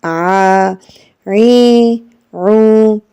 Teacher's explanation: it comes from the middle of the throat